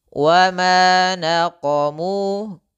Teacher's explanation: qo itu kental, mu itu tipis.